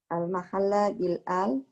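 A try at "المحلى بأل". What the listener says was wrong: Al-muhalla, ya, bukan al-mahalla. Al-muhalla.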